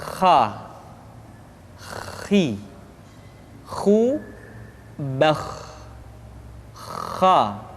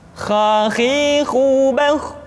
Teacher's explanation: Kha dikeluarkan dari pangkal tenggorokan. Kha, pangkal tenggorokan, diucapkan dengan mengalir nafas. Atau lebih praktisnya, pengucapan huruf kha persis terdengar seperti orang yang tidur dalam keadaan mengorok.